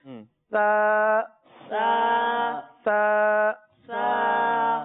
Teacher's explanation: دیکھیے اس میں سیٹی کی آواز نہیں آئے گی. صحیح. زبان اوپر لگے گی اور بالکل نرمی کے ساتھ یہ ادا ہوتا ہے